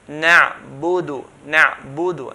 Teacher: Make sure we do not add the waw after the dal. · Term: 1 dhamma is 1 count